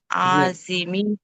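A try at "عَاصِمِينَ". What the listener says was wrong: అసీమిన్, హంజా తర్వాత దీర్ఘం లేదు.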